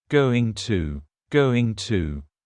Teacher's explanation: It's another informal contraction, just like want to. Going to is generally pronounced with the schwa.